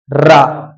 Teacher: र इसको लुंठित या प्रकंपित व्यंजन कहते हैं।